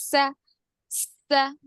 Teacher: सीन का जो मखरज है, जुबान की नोक नीचे के दांतों के अंदरूनी हिस्से को लगेगी